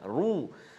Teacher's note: Kita telah belajar sebelum ini ra baris depan ataupun dhammah baca tebal, baca tebal lah, ru.